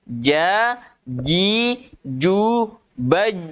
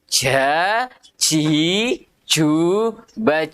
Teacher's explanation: Ketika kita melafalkan huruf jim, ya, maka perhatikan gambarnya, tengah lidah kita merapat ke tengah langit-langit atas. Dan rapatnya betul-betul rapat. Ya, artinya tidak boleh ada aliran nafas yang keluar ketika kita membaca huruf jim.